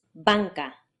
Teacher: an N produced with the back of your tongue instead of the front